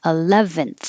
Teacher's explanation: when you finish you should have a th air flow